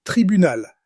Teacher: Listen for the clear final. L sound.